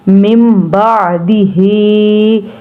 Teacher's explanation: अब मिम के हमने मीम को नून के साथ अटैच क्यों नहीं किया कि इसके ऊपर छोटी सी मीम आपको नज़र आ रही होगी कि इस मीम के ऊपर साकिन है, तो इसलिए हम नून को नहीं पढ़ेंगे। हम ये मीम के साथ मिलाएंगे।